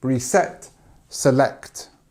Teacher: notice how the stress is on the second part of the word